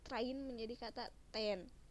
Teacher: Proses struktur suku kata ini terdiri dari pertama, reduksi cluster, yaitu suatu kelompok konsonan direduksikan menjadi satu konsonan saja